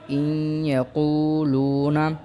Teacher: تو ہمارا قاعدہ یہ ہے کہ نون ساکن یا تنوین کے بعد حرف ادغام میں سے کوئی حرف آ جائے وہاں ادغام ہوگا، اور تشدید کی وجہ سے زیادہ زور اگلے والے حرف پر دیا جائے گا اور اس کو غنہ کے ساتھ ادا کیا جائے گا